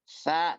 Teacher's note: Memang sih lancar ketika kita ucapkan lancar, tapi ada penyempitan ketika kita mengucapkan sa, enggak terbuka lebar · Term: aswat rohwah